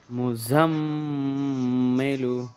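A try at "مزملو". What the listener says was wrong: এই ঝার উপরে কিন্তু গুন্না হবে না, মিমের উপরে হবে। মুজাম্মিলু।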